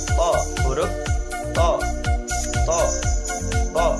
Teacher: punggung ujung lidah dan pangkal dua gigi seri muka yang atas · Sifatnya nafas ditahan atau jahar, suara tertahan atau syiddah, pangkal lidah naik ke atas langit-langit atau isti'la, lidah bertemu atau nempel dengan langit-langit, itbaq, tidak lancar dan hati-hati atau ismat, memantulkan suara tambahan atau qalqalah.